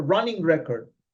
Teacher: So on the record, the stress is on the first syllable